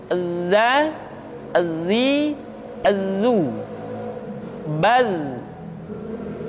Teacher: ketika kita mengucapkan huruf dza suara kita mengalir akan tetapi nafas tidak boleh mengalir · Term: huruf Za